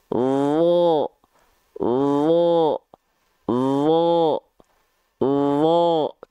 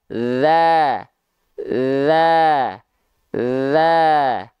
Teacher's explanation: karena huruf do adalah huruf yang tebal maka dia tidak tersenyum dan pangkaldahnya diangkat